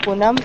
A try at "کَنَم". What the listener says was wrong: دیکھیے اتنا سکھانے کے بعد بھی آپ کنم پڑھ رہی ہیں جبکہ اس پہ زبر لگا ہوا ہے. ایک ہے کنم ایک ہے کنم. کنم کندن سے ہے چھیلنا.